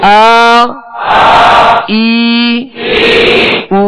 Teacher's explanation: اب آواز سے محسوس کریں گے کہ حمزہ کی آواز کچھ اور ہے اور عین کی آواز اور ہے، تو اس میں فرق یہ کرنا ہے حمزہ کو ابتدائی حلق سے ادا کرنا ہے